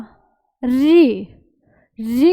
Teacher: री का जब आप उच्चारण करोगे ना तो जीभ जो है वो मूर्धा के साथ टच होती है, तो ये है मूर्धन्य स्वर।